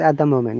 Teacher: if you pronounce it quickly one t will be gone